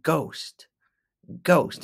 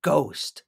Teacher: it's a hard G with a long o